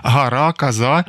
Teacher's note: акання так зване, гара, каза звучало у вимові наших співрозмовниць